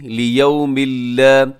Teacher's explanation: یہاں لیومن پہ تنوین کے بعد لام ہے تو یہاں ادغام ہوگا بغیر غننے کے